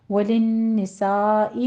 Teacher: وَلِلنِّسَاءِ میں نون مشدد ہے غنہ واجبہ کریں گے، اور سا میں مد متصل واجب ہے 5 کاؤنٹ کرنا ہے